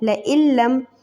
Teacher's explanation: ملایا ہم نے حمزہ کو لام سے، لیکن ہم نے ناک میں آواز نہیں نکالی۔ یاد رہے کہ ناک میں آواز نہیں جانی چاہیے، وداؤٹ نوزل ساؤنڈ، اوکے۔